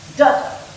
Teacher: That is 2 syllables, 1 strong, 1 weak, or 1 long sound and 1 short sound. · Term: trochee